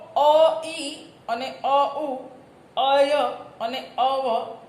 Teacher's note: ઐ અને અ ઈ અને અ ઉ એને બોલાય આ રીતે પણ અય અને અવ, કારણ કે ય અને વ અર્ધસ્વર છે